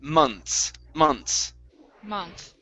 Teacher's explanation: don't pronounce the th pronounce an s so it's a i put it in the verbling chat box